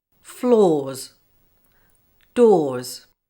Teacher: when s follows a vowel sound at the end of a word the ending sounds like Z